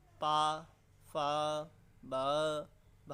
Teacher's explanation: तावर की बात कर ले तो दोस्तों, ये दंत से है, यही ता, था, दा, धा, इसमें भी 5 संख्या है दोस्तों, 5 व्यंजनों को विभक्त करा गया है। अब लास्ट है पा वर्ग, जिसमें ओष्ठ से आता है दोस्तों।